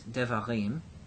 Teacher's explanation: What we have is devarim, with the accent on the im.